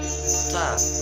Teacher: Sifatnya yang pertama berdesis atau nafas berhembus yakni hames. Yang kedua suara tertahan syiddah. Yang ketiga lidah di bawah istifal.